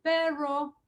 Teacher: si un hablante de inglés quiere hablar español, muchas veces dice perro, que es la retrofleja